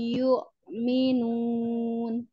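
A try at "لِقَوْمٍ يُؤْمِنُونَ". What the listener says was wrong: Jangan yu, tapi yuk ya, hamzah. Ya, ini ditutup aja pita suaranya. Yuk, yuk, tertahan. Suaranya tertahan ya. Yuk, minun.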